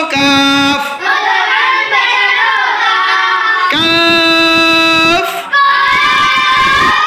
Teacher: জিব্বার গোড়া একটু আগে বাড়িয়ে তার বরাবর উপরের তালুর সঙ্গে লাগিয়ে মধ্যখান পেঁচানো কাফ